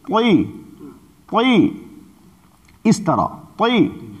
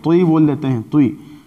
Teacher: ہونٹوں کو گول کر کے اور آواز کو گول کر کے تا کی آواز کو ہم یوں ہی بول دیتے ہیں